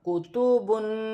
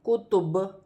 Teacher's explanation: کاف پیش کو، تا پیش تو، کوتو، با دو پیش بن، کتبن، وقفاً کتب۔ وقف کی صورت میں دو پیش کی تنوین گر جائے گی اور با ساکن ہو جائے گی